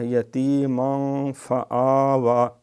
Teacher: اس کے غنّے کو ناک میں چھپاتے ہیں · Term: اخفا